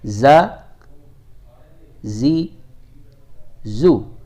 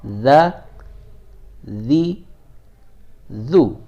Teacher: زا میں آپ کو پتہ ہے سیٹی کی آواز آئے گی، جبکہ ذال جو ہے اس میں سیٹی کی آواز نہیں آئے گی۔